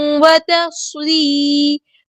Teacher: سواد میں سٹی بھی آنی چاہیے، حروف صفیریہ میں سے ہے